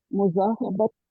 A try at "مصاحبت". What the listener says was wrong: اس میں زواد نہیں ہے، سواد ہے. مصاحبت یعنی صاحبہ، مصاحبہ ہے نا صاحب، تو مصاحبت کا تعلق.